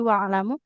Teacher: huruf ainnya harus lebih mengalir ya karena tawasud dia aliran suara yang pertengahan